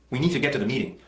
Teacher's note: there's sort of a choppiness to it, a sort of forward abrupt sound and feel to it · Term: Chinese rhythm